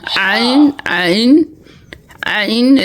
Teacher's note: 2 number মাখরাজ হলকের মধ্যখান হইতে